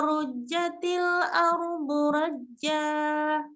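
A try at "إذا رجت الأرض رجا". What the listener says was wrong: Imalah rojatil ya majukan bibirnya rujja bukan roja sempurnakan dulu runya idza rujjatil ardu rajja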